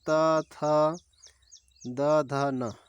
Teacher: जिन वर्णों का उच्चारण करते समय जीभ का अग्र भाग हमारे ऊपर के दांतों को स्पर्श करता है उन्हें दंतीय व्यंजन कहते हैं।